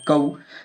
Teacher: کاف واو زبر کو، واو ساکن سے پہلے زبر ہے، واو لین ہوگی، واو لین کو نرم آواز کے ساتھ جلدی پڑھیں گے